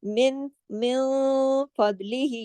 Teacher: نون ساکن کے بعد فا آ رہا ہے، اخفا حقیقی غنہ کاملہ